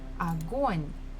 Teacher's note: the second syllable is stressed, so we must pronounce it O. The first one is not, so we pronounce it as A.